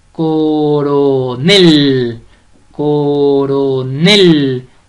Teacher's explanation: coronel es una palabra aguda sin tilde porque lleva la mayor fuerza de voz en la última sílaba